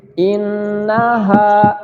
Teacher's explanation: Nun bertasydid ini sering Ustadz ulang, cara membacanya adalah dari hidung, ya. Cara membacanya di hidung, ya, suaranya harus dengung. Ditahan, tidak boleh buru-buru.